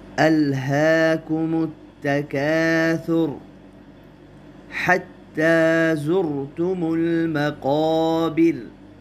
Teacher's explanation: را کو پر پڑھیں اس لیے کہ را سے پہلے پیش ہے۔